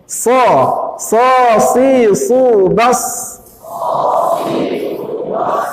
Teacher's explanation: Al-hamasnya, udara ikut serta keluar.